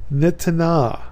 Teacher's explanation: the noon will assimilate into the T after a vowel sound